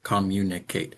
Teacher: Every syllable was given equal stress.